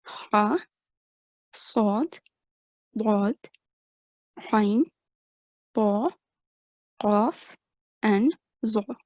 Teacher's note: huruf al-tafkhim should be pronounced with a broad and thick sound